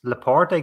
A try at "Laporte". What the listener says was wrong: Controversial pronouncing the E in Laporte.